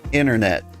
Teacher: I didn't pronounce the T in inter